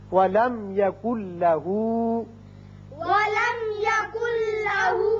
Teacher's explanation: نون ساکن کے بعد جب لام آ جائے تو وہاں ادغام تو ہوتا ہے لیکن غنہ نہیں ہوتا. اب نون نہیں پڑھا جائے گا، کاف کی آواز لام سے سیدھی ملے گی. یکن لہو پڑھیں گے.